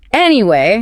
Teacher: >> When a native speaker uses anyway to return to a topic, they usually take a small breath, sigh slightly, and drop the pitch of their voice on the first syllable. Anyway, >> oh yeah, you can hear the sigh. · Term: the tone drop